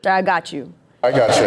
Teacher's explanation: As the tongue transitions from a t to the y sound, that little space of time as the tongue moves, as airflow continues, you're going to hear this little ch sound. I got you. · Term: assimilation